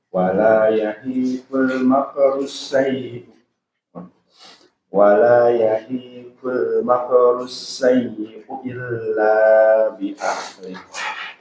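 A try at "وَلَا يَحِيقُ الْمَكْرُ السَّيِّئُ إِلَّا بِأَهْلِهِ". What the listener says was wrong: Masih ada yang kurang sedikit. Konsentrasi bahwasanya huruf kaf tidak boleh dikolkol. Ya, dia hanya hamas, keluar udara ya.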